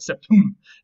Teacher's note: with the accent on the last syllable, on the m and not on the sept